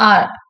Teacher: Hence ஆர் is voiced அல்வலார் அப்ராக்சிமெண்ட்.